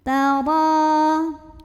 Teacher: Huruf ro dibunyikan secara tafkhim karena ro-nya berbaris di atas, bacanya tebal, pangkal lidah angkat.